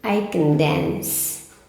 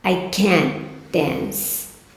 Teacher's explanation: Na sentença afirmativa, não estresse o can.